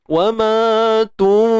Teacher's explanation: Kena ready lah untuk kita sebut fa tu, kena bersedia di makhraj fa, bibir mulut kan. Kemudian fa ni bersifat nipis, maka dengung kita pun nipis. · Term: ikhfa